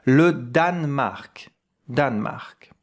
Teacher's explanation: Here we don't hear the E.